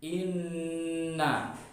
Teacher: ada nun tasydid, maka harus dibaca gunnah musyaddada, harus dibaca tasydid dan idgham, harus didengungkan